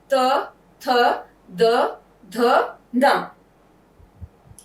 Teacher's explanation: चौथा है दंतव्य, जिन व्यंजनों को बोलने में हमारी जीभ हमारे दांतों को छू रही है। त, थ, द, ध, न।